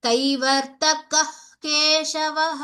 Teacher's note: कः सम्पूर्णविसर्ग न वक्तव्यं कः हाफ् हा हकार वक्तव्यम्